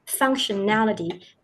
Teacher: the stress is on the nality, functionality, and you pronounce the T sound very clearly in the word.